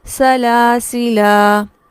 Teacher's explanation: الف چونکہ مدہ ہے تو یہاں پر اس کو کھینچا جائے گا اور پراپر مد اصلی کی جائے گی